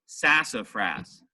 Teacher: Fras still gets an accent more than the middle syllable but not as much as the first syllable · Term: primary accent